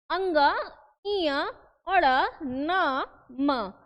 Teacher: यानी वो ये क्या हो रहा है, नाक के द्वारा, यानी हवा जो है वो नाक के द्वारा निकल रही है, तो आवाज कैसा हो रहा है, लग रहा है ना कि हम लोग बोलते हैं ना, अरे नाक में बोल रहा है। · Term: अनुनासिक व्यंजन